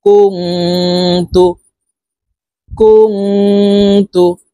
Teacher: জবর ইয়া সা ইয়া সায়া কাফ নুন পেশ কুম ইকফা গুন্না নুন সাকিনের পরে ইকফার হরফ তা আসছে এই কারণে এই নুনকে নাকের ভিতরে লুকাইয়া গুন্নার সহিত পড়বো